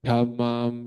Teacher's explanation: jadi da-nya itu harus jelas keluar angin